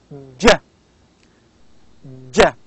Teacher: while j is palatal, affricate, voiced sound. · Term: affricates